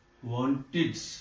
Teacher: Id. This ed is pronounced as id.